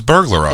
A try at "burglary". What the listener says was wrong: You're adding an extra syllable